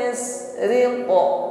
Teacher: sin sukun berdesis tipis ya. Kalau shin menyebar anginnya yush, kalau sin tipis.